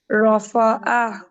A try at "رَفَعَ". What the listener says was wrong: روفو نہیں, فا باریک ہے, روفا, فا, را موٹا, فا باریک, رفع, رفع. روفو نہیں, رفع, رفع, فو نہیں, فا.